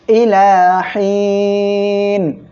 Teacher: সম্মানিত দর্শক শ্রোতা, আমরা এখানে ওয়াকফ করলে নুন অক্ষরটি সাকিন হবে, আর এক আলিফ মদ এর পরের অক্ষরে ওয়াকফের কারণে সাকিন হওয়ায় মদ দার্জি হবে, 3 আলিফ টেনে পড়তে হবে, এজন্য আমি 3 আলিফ টেনে পড়েছি।